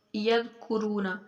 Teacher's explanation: جو ہماری زبان کی نوک ہے، اوپر والے جو دو دانت ہیں سامنے والے، ان کے سروں سے ٹکرائے تو ذال ادا ہوگی